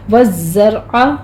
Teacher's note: زے کے اوپر تشدید ہے، سختی کریں گے، آگے را مفخم پڑھی جائے گی